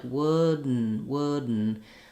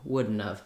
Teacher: It doesn't go right to the N. You do have to stop the air for the D